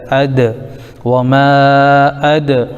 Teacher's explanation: ساتھ تو ما، وما، حمزہ پر زبر لیکن دال ساکن اد، یہ دال حروف قلقلہ میں سے بھی ہے، اس کی آواز لوٹ کر آئے گی